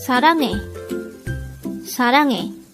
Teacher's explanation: This is pronounced as a 3-syllable word. The first syllable is sa, second syllable is rang, third syllable is he.